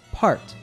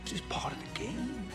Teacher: one characteristic of the American southern accent is that it has a non-rotic r like in most British accents we can hear this in how he says the word part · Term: non-rhotic R